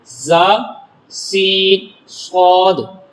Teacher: ان کو ادا کرتے وقت سیٹی کی طرح تیز آواز نکلتی ہے، اس لیے ان حروف کو حروف صفیریہ یعنی سیٹی والے حروف کہتے ہیں۔